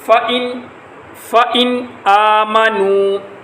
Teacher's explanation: واو کے اوپر ہونٹ کو گول کیا جائے گا جیسے پائپ کے اندر پھونک مارنے کی شکل میں ہونٹ گول ہوتے ہیں